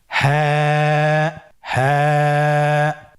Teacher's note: হা হরফটি উচ্চারণের স্থান কন্ঠনালীর শুরু হতে অথবা আমরা যদি আরবিতে বলি হলকের শুরু হতে